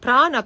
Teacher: you roll the tongue back the bottom of the tongue touches the Dome of the pallet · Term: cerebral